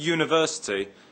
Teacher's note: the word university begins with a U but is pronounced with a Y sound at the beginning